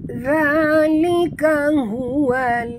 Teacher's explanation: za jaga makhraj di hujung lidah huruf za lembut